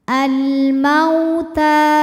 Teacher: sebab ada wau sukun didahului harakat fathah maka dibacanya lembut atau lunak · ta hukumnya Mad thobii muqaddar sebab ta berharakat fathah panjang cara membacanya ta dipanjangkan dua harakat